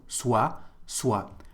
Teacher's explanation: there is a T, but we don't pronounce it